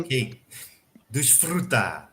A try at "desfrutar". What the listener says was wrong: Desfrutar. You're going a bit too hard on the rolled R in the middle. If you could just kind of glance over it quickly. You're trying to highlight it.